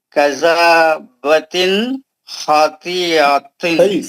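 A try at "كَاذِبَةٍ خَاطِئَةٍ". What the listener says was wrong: کاذبتن, مد اصلی ہے وہ. کاذبتن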